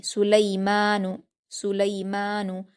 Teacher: لام پر یائلین ہے، اس کو ہم معروف آواز کے ساتھ جلدی پڑھیں گے.